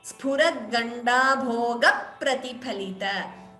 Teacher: That before pra, you are hearing two P's. So, Dvitvam there.